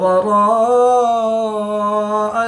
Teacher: الف مدہ کے بعد حمزہ اسی کلمے میں ہے تو یہاں پر مد متصل ہوگی، 3 سے 5 الف تک کھینچ کر پڑھیں گے